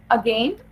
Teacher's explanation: in अगेन, अ is unstressed and गेन is stressed